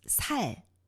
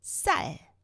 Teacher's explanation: The first one, it's a little longer vowel sound. And the second one shorter.